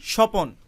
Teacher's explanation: স্বপন এই উচ্চারণের মধ্যে ব ফলার কোনো অস্তিত্ব নেই, এবং ব ফলা এই উচ্চারণের মধ্যে কোথাও প্রভাবও ফেলেনি। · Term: অনুচ্চারিত